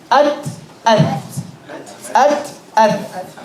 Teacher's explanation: The tha, which has 3 dots, the tip of the tongue is between the top and bottom teeth.